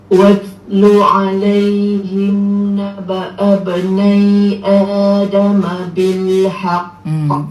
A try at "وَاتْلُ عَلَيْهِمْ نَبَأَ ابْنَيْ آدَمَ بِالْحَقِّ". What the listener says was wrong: بال tak mau. آدم بالحق با كسرة بي. آدم بالحق. حرف حاء masuk betul-betul tempat dia. Jadi balik bil آدم بالحق.